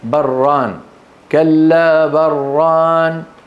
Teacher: لو وصلناها سندغما في الراء